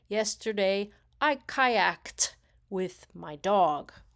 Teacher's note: you can hear that the pronunciation of kayaked actually sounds like a T sound